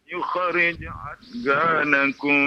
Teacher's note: Huruf dhad bukan huruf qalqalah. Jadi jangan diqalqalahkan.